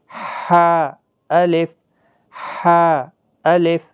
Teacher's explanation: حروف حلقی کا حا، وسط حلق والا